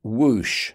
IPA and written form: wuːʃ (whoosh)